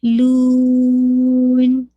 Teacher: جب آپ اس کو روکیں گے لو کو تو نیزل ساؤنڈ اینڈ میں ڈالیے گا کیونکہ آپ کو ناقص غنہ کرنا ہے نا